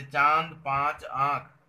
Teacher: अनुनासिक ध्वनियों के उच्चारण के समय हवा नाक और मुंह दोनों से निकलती है।